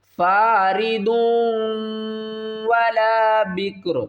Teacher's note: ضاد کو واو کے ساتھ ملا کر پڑھیں گے اور غنہ کریں گے ، یہاں پر ادغام کا قاعدہ ہے، کس طرح، ضاد واو